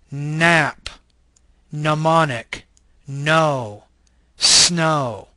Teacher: This is an alveolar, nasal voice consonant.